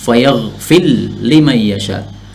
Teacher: Yaghfir, yaghfiru menjadi yaghfir. Kemudian ra-nya diidghamkan pada lam menjadi fayaghfil. Jadi ra-nya hilang menjadi lam. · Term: idgham kabir